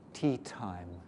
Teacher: For English, the tip of the tongue is just blown off by the light air pressure. · the tip of the tongue very gently touching the alveolar ridge, and then the pressure build up behind it, blowing the tip off, and creating the aspirated T that way.